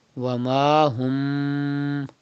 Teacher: You can see ba after mim sakin. So it is ikhfa shafawi. You have to do gunna in mim sakin.